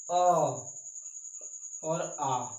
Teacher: कंठ स्वर है, जो कंठ से बोले जाते हैं